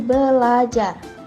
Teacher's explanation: bunyi R pertama didisimilasikan dengan bunyi L sehingga menjadi belajar